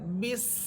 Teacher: দুই ঠোঁট থেকে বা হরফটা উচ্চারিত হবে।